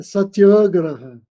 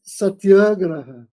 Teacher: se eu fosse falar em sânscrito, a gente não torna as palavras paroxítonas